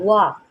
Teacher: वाव जो है इसको हम होंठों को गोल करके पढ़ते हैं। इसको आपने वा नहीं पढ़ना, इसको आपने वा पढ़ना है, वा।